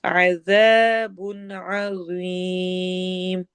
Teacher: لَهُمْ عَذَابٌ عَظِيمٌ، ذال اور ذو دونوں نرم حروف ہیں، لیکن ذال نرم کے ساتھ باریک بھی ہے اور ذو موٹا ہے